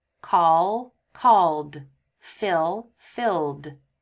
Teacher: Now we're going to look at ed pronounced as d. So verbs that end in a voiced sound, again that's a sound with a vibration, we pronounce the ed as d. So ul, call, called, fill, filled.